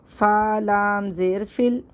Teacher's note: فا کو لام سے ہم فوراً ملا دیں گے